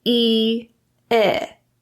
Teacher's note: It's the difference between a tense and a relaxed tongue.